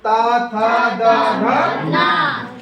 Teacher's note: ऊपरी दांतों के निकट से आवाज आएगी ना